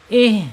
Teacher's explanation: mengalirnya napas ketika ha ini sukun ya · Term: alhams